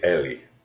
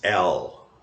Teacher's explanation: so we emphasize this final final vowel so le right and in English it's L so you don't have this vowel at the end